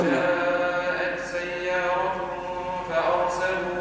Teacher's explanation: فأخفي التنوين مع الغنة